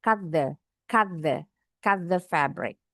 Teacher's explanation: disambung aja T dengan th-nya. Bunyinya dimiripin.